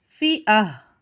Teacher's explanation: अब यहाँ जब हम वफ़ करेंगे तो ये गोल ता जब होती है उसके नीचे दो ज़ेर की तनवीन होती है, तो वफ़ करते वक्त इस ता को हम हा में बदल के पढ़ते हैं